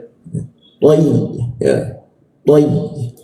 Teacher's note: Masuk ke ya, yaitu posisinya di tengah-tengah lidah.